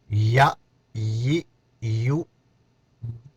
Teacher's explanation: یا زبر یا زیر یا پیش یا یو یا کے وقت ادائیگی کے وقت میں نے آپ سے عرض کی ہے، اوپر جو پیچھے گزشتہ آپ کا سبق جو گزر چکا ہے اس میں جیم اور شین بھی چل رہا تھا۔ جیم، شین اور یا، اس کا مخرج بھی ایک ہے، زبان جو ہے نا درمیان میں پھیل جائے گی